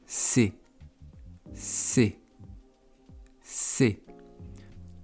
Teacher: Pour faire le C, il faut avoir les dents qui se touchent. Et la langue va venir derrière les dents.